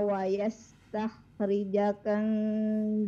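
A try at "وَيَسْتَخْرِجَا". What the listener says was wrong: Jimnya dua harokat wa yastakhrija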